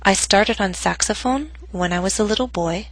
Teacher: my voice went down on boy but not to its lowest pitch because the statement is not complete